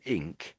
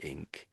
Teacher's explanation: to get the K, you're sort of having to lift your tongue at the back as well. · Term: NK sound